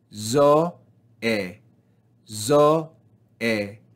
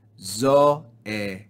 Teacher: the grave accent telling us to fall down on the second syllable